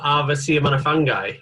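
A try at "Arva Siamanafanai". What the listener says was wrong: It's Fanai, the G is silent, yeah.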